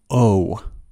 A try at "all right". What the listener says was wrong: I cannot say oh right. The word has two pronunciations. Some people say all right, and they pronounce the L, all right. The first vowel is the sound ah, ah, like in words call and ball. The sound is back here, ah, ah, all right.